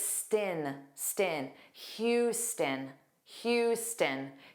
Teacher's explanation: And then the end sound is unstressed, so it's stin, stin. Houston, Houston.